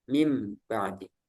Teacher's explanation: Nah, kemudian kemungkinan yang ketiga, nunnya berubah. Jadi dari nun menjadi mim